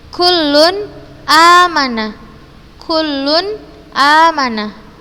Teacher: maka huruf nun sukun atau tanwin nya dibaca jelas · apabila nun sukun atau tanwin bertemu dengan hamzah maka kita bacaan nun sukun nya jelas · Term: izhar halqi